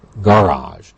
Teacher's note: such as garage of course that's the French spelling and then it becomes anglicized with stress on the first part of the word